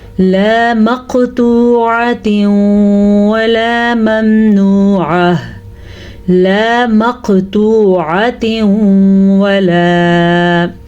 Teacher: قاف پہ ساکن ہے تو قاف پہ پھر سے قلقلہ ہوگا. طوا کو ہم نے پر پڑھنا ہے کیونکہ طوا پر پڑھے جانے والے حروف میں شامل